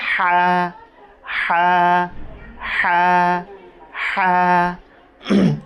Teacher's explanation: এটা হলকের মাঝখান হতে, এটা একটু চিপে বলতে হবে